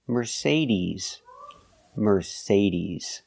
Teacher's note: the final sound is not s like Star it's Z like zebra Mercedes Mercedes put the stress on the second syllable Mercedes remember